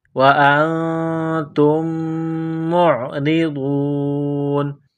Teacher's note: تا کو میم کے ساتھ ملانا ہے، پلس کرنا ہے، میم مشدد ہے، غنہ کریں گے، آواز ناک میں چھپائیں گے